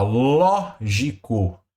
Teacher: lógico antepenúltima sílaba tônica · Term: proparoxítona